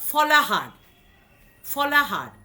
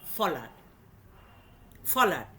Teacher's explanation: দেখো, সহির অ এবং ইর মাঝখানে যে হটা ছিল সইতে, সেই হটা আমরা তুলে দিলাম। অর্থাৎ মধ্যে যে ব্যঞ্জনধ্বনিটা ছিল সেই ব্যঞ্জনধ্বনিটাকে আমরা লুপ্ত করে দিলাম। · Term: মধ্য ব্যঞ্জনধ্বনির লোপ